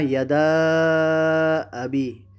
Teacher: یہ مد جائز منفصل ہے، ٹھیک ہے۔ اس کو 3 یا 4 الف کی مقدار اس کو کھینچ کر پڑھنا ہے، اور بعض نے 2 الف تک بھی اس کو جائز قرار دیا ہے۔